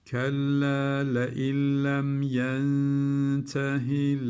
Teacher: Bakın uzatmadık buradaki hiatılırdı kendinden önceki harekel ama bunu uzatmıyoruz. Yentehi uzatmadan hemen devam ediyoruz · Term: kasır